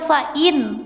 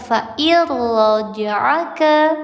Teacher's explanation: Tidak dibaca fa'in, tapi dileburkan fa'ir raja'aka. Hukum tajwidnya idgham bila gunnah.